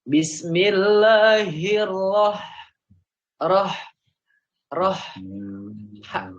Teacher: Kadang-kadang tanpa kita sadari itu nyerempet ke kho gitu. Nyerempet ke atas. Harusnya ha.